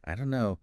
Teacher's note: the don't and no just merge. >> So becoming aware of this linking is really important for understanding and for sounding more natural yourself.